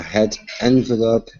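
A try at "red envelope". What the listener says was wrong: careful with the are say red red red good because i was hearing head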